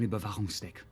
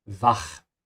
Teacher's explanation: you pronounce the CH with a ch sound and a vibration in the back of your throat because the CH ends after an A.